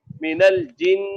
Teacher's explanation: ये 4 अलिफ की मिकदार गुन्ना हो गया, ज्यादा हो गया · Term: 4 अलिफ गुन्ना